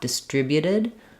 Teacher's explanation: change your final T for a flap